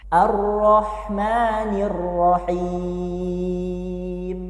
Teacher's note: pastikan kalian tekan huruf rnya karena dia bertasdid dan di sini pakainya H kecil yang keluar dari tengah tenggorokan